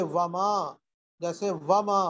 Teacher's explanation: دونوں ہونٹ کہ ان کو گول کرنے سے واو ادا ہوتا ہے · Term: صولب مخرج